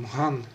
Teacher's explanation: то есть было маган, выпало первое «а» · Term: редукции